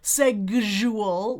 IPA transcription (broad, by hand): ˈsɛg ʒu əl